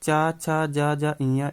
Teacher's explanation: इनका उच्चारण स्थान होता है तालु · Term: चा वर्ग